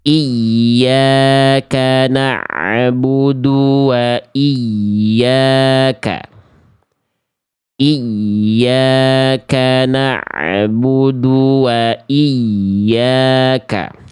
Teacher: Na'budu karena bunyi ain sukunnya ada suara tambahan berupa e di ujung pelafalan ain sukunnya